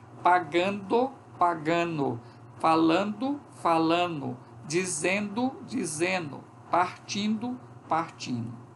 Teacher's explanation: essa consoante nasal antes desse D faz com que esse D também se torne nasal. É como se eu tivesse depois, como consequência, 2 NEs aqui. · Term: Fenômeno de assimilação